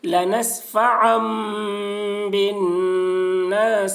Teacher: لنسفعا بالناصی، یا زبر یا کے اوپر زبر ہے، زبر کو جلدی پڑھیں، تھوڑا بھی نہ کھینچیں